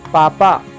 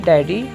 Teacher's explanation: पापा बोलने से दोनों ओंठ आपस में जुड़ते हैं और डैडी बोलने से नहीं जुड़ते। पापा प वर्ग ओष्ठ है, जबकि डैडी ट वर्ग मूर्धन्य है।